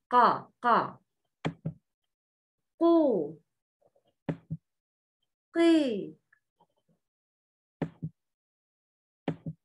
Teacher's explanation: Can you notice the elevation of the tongue towards the roof of the mouth? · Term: استعلاء